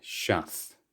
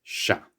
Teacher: know means now very very frequently is shortened to sha's and occasionally some people are really lazy and they'll drop the s at the end as well